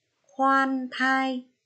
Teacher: Lưu ý cho cô vần oan âm cuối N. Và khi phát âm tiếng khoan, vần oan thì các con phải tròn môi.